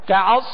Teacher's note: صاد کو پر اور سیٹی کی آواز میں پڑھیں گے. کعصف، یہاں غنہ کریں گے.